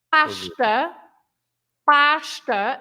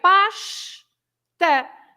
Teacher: So the S at the end of this syllable, pash, is also pronounced as sh